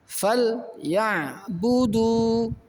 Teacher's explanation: awal ayat ada lam yang disukun dan kemudian ada huruf yang dibaca fathah, maka juga dibaca satu ketuk saja